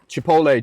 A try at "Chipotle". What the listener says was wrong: Why are you not saying the T? Chipotle? Chipotle?